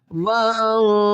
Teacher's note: نون ساکن کے بعد حروف اخفا میں تا ہے، تو یہاں پر اخفا مال غنہ کریں گے